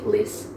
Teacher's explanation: bunyi huruf T-nya itu tetap dibaca, tapi dalam AAVE ini tidak, T-nya itu dihilangkan